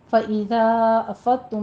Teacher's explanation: ذا کے اوپر مد منفصل جائز ہے، 4 کاؤنٹ کرنے ہیں. افضتم میں وہی ضاد کو آپ نے اپنے مخرج سے ادا کرنا ہے، پر پڑھنا ہے.